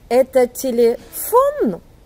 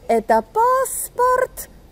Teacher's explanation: On monte la voix et on la monte brusquement. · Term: l'intonation montante